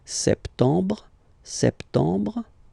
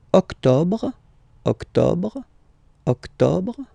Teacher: You don't insist on the final E.